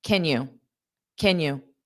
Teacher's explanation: Can you sounds like Kenya, because can will be unstressed